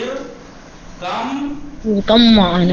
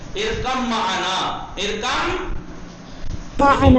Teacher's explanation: بے پڑھا تو نہیں گیا، بے کو ڈیلیٹ کر کے میم میں ادغام کیا